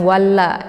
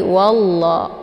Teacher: untuk hukum bacaan lafdzul jalalah ini dibaca tafkhim ya, tebal, karena sebelum lafadz Allah ini berharokat fathah yaitu wa ya.